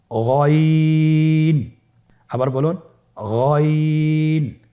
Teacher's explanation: গইন হরফটি উচ্চারণ করা অবশ্যই 3 আলিফ টেনে পড়তে হবে এবং আমরা জানি যে গইন হরফটি মোটা হরফ, অবশ্যই একটু মোটা করে বলতে হবে।